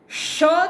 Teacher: ષ છે એ તાલવ્ય સંઘર્ષી છે